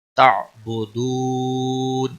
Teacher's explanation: تعبدون، یہاں پر بھی واو مدہ ہے اور وقف کی صورت میں نون ساکن ہوگا تو مد العارض وقفی ہوگا، 3 سے 5 سیکنڈ لمبا کر کے آپ وقف کریں گے